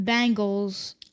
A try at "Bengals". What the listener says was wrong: you're saying Bengals like it's an a